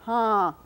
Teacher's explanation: You don't just say ha, you say ha, kind of, through, a little bit through your nose. So that tilde, which you may be familiar with from Spanish, is used to mark a vowel as nasalized. · is some kind of marker that indicates that val was nasalized you don't just say ha you say huh through a little bit through your nose